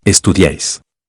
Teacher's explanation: la mayor fuerza de voz se cae en la a es decir esta vez no recayó en la vocal débil segundo